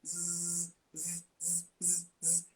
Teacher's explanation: ele causa uma vibração nas pregas vocais e ele vai fazendo a limpeza ali, né?